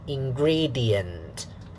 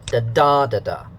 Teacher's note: syllable one syllable two will be stressed so and then syllable 3 unstressed